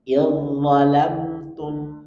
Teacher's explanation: za bertemu dengan lo, maka langsung masuk ke lo, seakan-akan za-nya hilang.